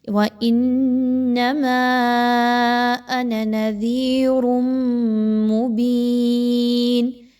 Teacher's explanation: یاد رکھیے کہ نون ساکن یا تنوین کے بعد میم کا حرف آ جائے تو ادغام مع الغنہ کیا جاتا ہے، یعنی آپ نے یہاں پہ تنوین کی آواز کو میم کی آواز میں ملانا ہے اور غنہ بھی کرنا ہے